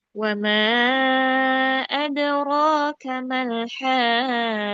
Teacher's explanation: Nah ini patokan utamanya adraka. Di adrokanya itu naikkan supaya nanti malhaqqah bisa diambil datar nadanya.